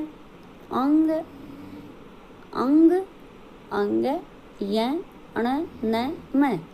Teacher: हमारे नाक से ये बोले जाते हैं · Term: नासिक